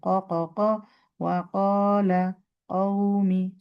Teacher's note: ক ক ক পেছন থেকেই বলবেন, এবং খুব প্রেশারের কিছু নাই, নর্মাল টাচিং বাই টাচিং